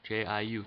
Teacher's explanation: we're starting at two dipping down to one and then rising up to four okay so that's the third tone uh let's pick a number